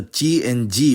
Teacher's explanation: most French speakers I hear already do very subtle palatalization of those plosives